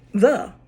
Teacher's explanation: So for the word the first sound would be th, and there is a voiced th, and there is an unvoiced. For the word the th is voiced.